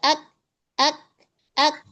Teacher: Dia mempunyai sifat hams dan syiddah. Iya. Jadi syiddahnya dulu baru hams. Jangan syiddah aja.